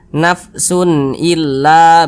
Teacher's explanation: illa begitu Jangan dibaca Sun illa jangan dipanjangkan seperti itu jangan karena dia izhar sunnya dibaca jelas kemudian tidak dipanjangkan nafsun illa begitu kemudian la dibaca panjang sekarang perhatikan kembali rumus